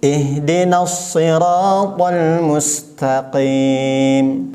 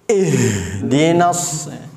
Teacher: Ha ini di tenggorokan hurufnya, bukan di dada.